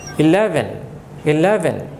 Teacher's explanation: লয়ের উপরে জোর দিতে হবে লয়ের উপরে স্ট্রেস দিতে হবে